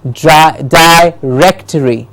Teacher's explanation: It's not directory, it is directory. The rec gets the stress